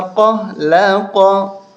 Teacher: اس طرح کا جو قاف دو نقطوں والا، اس قاف کو موٹا کر کے پڑھتے ہیں